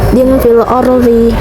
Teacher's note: Terdapat ro mati yang sebelumnya itu ada baris fathah. Cara bacanya ro-nya dibaca tebal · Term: tafkhim